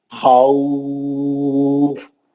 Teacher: کیونکہ خو میں جو ہے لین ہے اور فا پہ 2 زیر کی تنوین تھی، ہم ہٹا کے ساکن کر دیے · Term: مد لین آریز